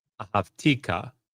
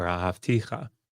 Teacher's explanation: the cha ending, which I think he just pronounced with a hard K, means you.